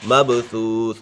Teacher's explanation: با کے اوپر قلقلہ ہے، حروف قلقلہ 5 ہیں